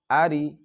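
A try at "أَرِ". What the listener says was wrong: এখানে লম্বা হওয়ার কোনো কারণ নেই।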